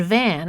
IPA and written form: væn (van)